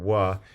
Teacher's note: this is a complex segment that has closure both of the lips and the velum so labial velar but the closure is not at all complete